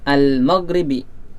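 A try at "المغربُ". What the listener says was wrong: kenapa jadi bi? Iya, al-maghribu ini ada salah coretan ya. Iya, al-maghribu waktu maghrib.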